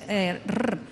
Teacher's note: tenemos un sonido que es vibrante múltiple, es R doble